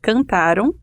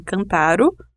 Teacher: a sílaba final é átona, isto é, a sílaba com menor intensidade sonora, que é na escrita do português grafada com a letra M, não é pronunciada de forma nasalizada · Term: desnasalização